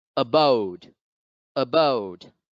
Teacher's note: the apostrophe now comes over the second syllable so therefore bode must be stressed